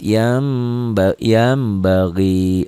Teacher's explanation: di atas nun mati kan ada mim berarti bunyi n-nya jadi m · kan ada mim berarti bunyi n-nya jadi m Oh gitu gimana Yan jadi yam tapi bindeng dikit